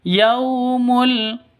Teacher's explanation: Ayyatiya yaumul. Yau sifat lin, lentur, lemes, tidak boleh disentak apalagi dipanjangkan.